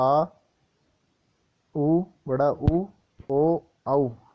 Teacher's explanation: जिन स्वरों के उच्चारण में जीवा का पिछला भाग सक्रिय रहता है उन्हें पश्च स्वर कहते हैं